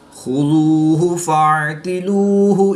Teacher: واو ساکن سے پہلے دال پر پیش ہے تو واو مدہ ایک الف یعنی 2 حرکات کے برابر کھینچ کر پڑھیں گے